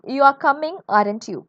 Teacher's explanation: if the speaker is trying to confirm information the tone Rises